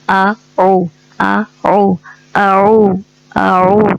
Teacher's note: تو ان دونوں کو فرق کرنے کے لیے حمزہ نرمی جلدی سے ادا کرتے ہیں اور عین تھوڑا زور لگا کے